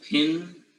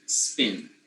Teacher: The first word has this P, which is a plosive, aspirated P, right? And the second has a regular P.